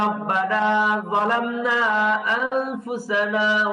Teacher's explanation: মোটা হরফে কমন যে কাজটা করতে হবে সেটা হলো যেখান থেকে উচ্চারণ সেখানে তো হবেই। জিহ্বার অগ্রভাগ সামনের দাঁত এখানে তো লাগবে, সঙ্গে জিহ্বার গোড়াকে একটা জোরে চাপ দিতে হবে।